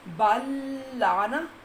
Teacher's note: دیر اس لیے لگانی ہے تاکہ پتہ چلے کہ تین لام جو ہے وہ مدغم ہو رہے ہیں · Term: ادغام مثلین